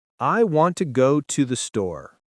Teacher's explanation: Notice how we stress want, go, and store. The small words to and the are weak. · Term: stressed